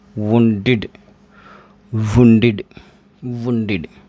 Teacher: इस ईडी का उच्चारण जो है, प्रोनाउंसिएशन है, वो इड होगा